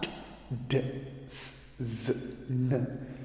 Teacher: It is also a voiced alveolar sound. Of course, t and s are voiceless, whereas d, z, and n are voiced sound.